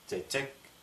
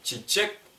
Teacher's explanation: особенность произношения тувинской буквы Ч в том, что она тверже русского.